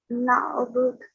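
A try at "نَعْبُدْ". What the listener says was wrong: Good. So you replace. Yep, excellent. You replace the dhamma with sakin.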